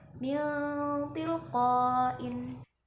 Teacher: ketika nun sukun bertemu dengan ta, maka bacaannya itu samar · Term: ikhfa